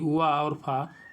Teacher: निचले ओठ तथा ऊपरी दांतों से होता है